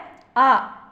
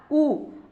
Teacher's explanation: இதழ்கள் குவிக்கும் போது ஒலிக்கும் எழுத்து